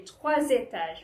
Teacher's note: So trois ends with an S and étage starts with an E, right? A vowel. So you have to link it and say trois étages. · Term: liaison